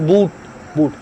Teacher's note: this oo sound comes from the back of your mouth